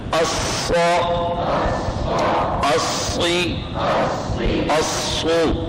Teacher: الصا میں آواز جاری رہی پھر شد ظاہر ہو گیا. اور جو استاد طالب علم یوں پڑھے گا الصا آواز رک کے آواز بند ہو کر پھر جاری, تو یہ غلطی ہوگی کہ شدت پیدا کر لی ہے جی.